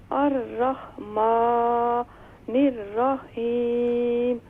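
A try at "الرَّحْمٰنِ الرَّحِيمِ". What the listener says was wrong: الرحمن نہیں، الرحمن، خا اور حا میں فرق کریں. الرحیم، را کو فل ماؤتھ کریں.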